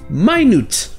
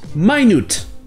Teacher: Oubliez le son « et » ici, c'est le son « I » et le son « ou ».